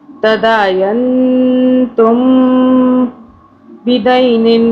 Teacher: میم کو ہم نے 2 سے 3 سیکنڈ کے لیے چھپانا۔ یہ میم ساکن کا قاعدہ جو ہے یہ اخفاء شفوی کہلاتا ہے، یعنی اس میم پر اخفاء کرنا ہے 2 سے 3 سیکنڈ کا۔